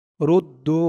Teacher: দু এখানে 3 আলিফ টান হবে, মধ্যে মুনফাসিল